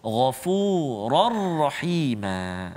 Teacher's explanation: Dan juga contoh yang terakhir, Ghafurar Rahima, tanwin baris dua di atas bertemu dengan huruf ra, Ghafurar Rahima, kan? Jadi tanpa dengung, masukkan terus bunyi tanwin ke dalam huruf ra tanpa dengung. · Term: idgham bila gunnah